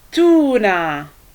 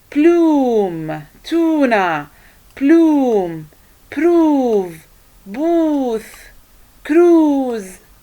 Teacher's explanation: the muscles in the mouth including the tongue are tight while pronouncing this vowel